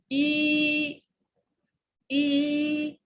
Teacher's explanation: the first one the front vowel e sound your mouth is more closed